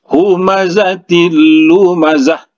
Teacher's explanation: tanwin bertemu dengan huruf lam, itu hukumnya idgham bila gunnah. Jadi langsung saja dimasukkan dan jangan didengungkan.